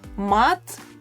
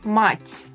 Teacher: Mat has a hard T in the end, and in the word mать, the last letter became softer because of the soft sign in the end.